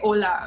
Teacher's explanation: h is usually silent in spanish so you don't say the sound huh